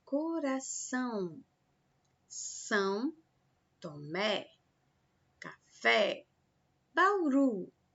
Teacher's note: observe que a última sílaba aí é pronunciada com mais força · As oxítonas é quando a sílaba tônica é a última, como por exemplo a palavra coração, São Tomé, café, Bauru. Observem que a última sílaba aí é pronunciada com mais força